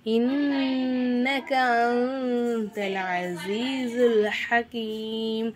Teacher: இன்னக நூனுக்கு மேலே சத்து வந்திருக்கனால நூனை நல்லா அழுத்தி உச்சரிக்கணும்